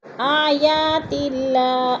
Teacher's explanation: اللہ باریک پڑھا جائے گا اس لیے کہ اللہ سے پہلے لفظ تا کے نیچے زیر ہے تو اللہ کو باریک کر کے پڑھیں گے۔